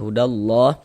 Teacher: Sengaja lafaz Allah dibaca panjang. Mad tabi'i panjangnya 2 harokat.